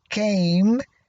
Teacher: the vowel sound A becomes nasalized because it occurs before the nasal sound